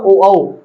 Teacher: हमारा कंठ और होट दोनों ही मदद करते हैं इसलिए इन धवनी को हम क्या बोलते हैं कंठ ओष्ठ व्य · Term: कंठ ओष्ठ धवनी